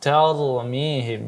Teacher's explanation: Iya, kemudian huruf ra, ya seperti kita jelaskan, kalau dia sebelum huruf ra yang sukun ini ada huruf yang berbaris fathah, maka ditebalkan